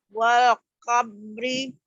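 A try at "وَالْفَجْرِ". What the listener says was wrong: Wal fajri. Bukan wal kobri ya. Wal fajri. Wal fajri. Wal fajr jadinya ya dihentikan.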